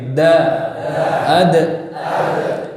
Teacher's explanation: tempat keluarnya adalah ujung lidah dan pangkal gigi seri atas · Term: huruf ta, dal